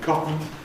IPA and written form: ˈkɒtn̩ (cotton)